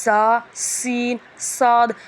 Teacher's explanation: ان 3 حروف ذا، سین، صاد کو ادا کرتے وقت سیٹی کی طرح آواز نکلتی ہے، اس لیے ان حروف کو حروف صفیریہ یعنی سیٹی والے حروف کہتے ہیں۔